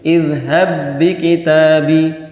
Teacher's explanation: Tapi kalau izhab bi kitabi hilang apanya? Qalqalahnya. Izhab enggak ada b-nya.